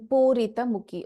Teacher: Pu is a dirgha, ri there is a hrasva. In pu there is a u dirgha. In Purita ra, ri, ra plus e, there is a hrasva, which is a short vowel, ra plus a short vowel.